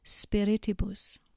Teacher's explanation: You'll note that spiritibus has 4 syllables, and the second syllable needs to be emphasized